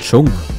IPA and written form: tʃʊŋk (Tschunk)